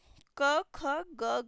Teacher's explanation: कंठ ध्वनियां जो कि कंठ से निकलती है